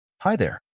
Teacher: Listen closely to the intonation. It's usually said with a friendly, slightly upward inflection.